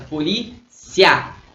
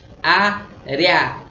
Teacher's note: O A é mais forte, ditongo crescente.